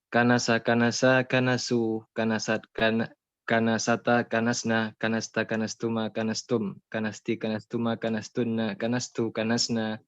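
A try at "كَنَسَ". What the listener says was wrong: Nah, bagus.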